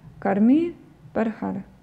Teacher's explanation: произносится а ближе к очень краткому звуку А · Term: мукта